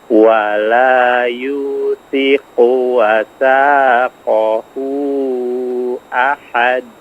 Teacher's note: qafnya diperjelas ya makhrajnya. Jangan seperti kaf ya.